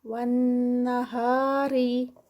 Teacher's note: والنہاری، ون پہ غنہ، نون مشدد، اور ری اس کو لائٹ رکھنا ہے کیونکہ را کے نیچے زیر ہے